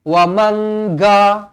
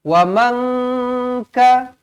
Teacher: Dia akan ada tambah huruf G ataupun huruf K dekat hujung sebab nak masuk ke dalam huruf kaf. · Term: ikhfa